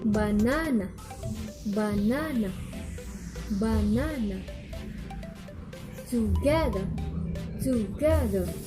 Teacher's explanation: primary stress is on the second syllable and all other syllables are unstressed.